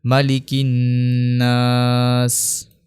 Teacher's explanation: کاف نون زیر کن، مالکن، نون الف زبر نا، مالکن نا، سین زیر سی، مالکن ناسی۔ آخر میں سین کا جو زیر ہے اس کو ہم ہٹا دیں گے